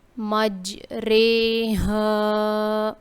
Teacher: یعنی کہ یہاں پہ ہم نے ری نہیں پڑھنا رے پڑھنا ہے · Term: امالہ